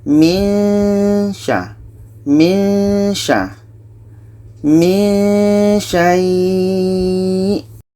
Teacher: Ketika sebut huruf nun, kita sudah merasakan sya. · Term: ikhfa hakiki